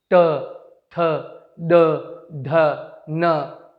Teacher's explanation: मूर्धन्य मूर्धा को टच करता है